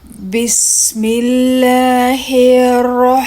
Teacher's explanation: Now we have the ha sakin. This ha comes from the middle of the throat.